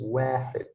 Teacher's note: I pronounce it حد because it's short vowel, but wa because alif is a long vowel